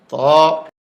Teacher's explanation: এ হরফটি 1 আলিফ পরিমাণ লম্বা হবে, জিহ্বার আগা উপরের দাঁতের গোড়ায় ভিতর দিয়া ধাক্কা দিয়ে মুখ খুলে দিবে।